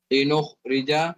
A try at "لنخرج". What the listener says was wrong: No. Ahmed, teach how to say kha properly.